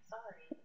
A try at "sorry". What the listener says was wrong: It's because sorry isn't spelled with an A. Sorry, yeah, except without so much emphasis on the R. Sorry, that's how it's spelled. S-O, not S-A-W.